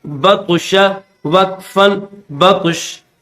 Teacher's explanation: جو طا ہے اس طا پر بھی قلقلہ کیا جائے گا، یعنی اس کو ظاہر کر کے پڑھا جائے گا